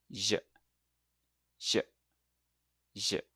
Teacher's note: start with the same tongue position just behind your top front teeth. Now this time when you release, add your voice to get the J sound